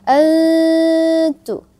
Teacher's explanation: karena ada nun mati bertemu dengan huruf ikhfa yaitu ta, maka dibaca samar ya. Antu. Nah, samar ke huruf ta ya. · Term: ikhfa haqiqi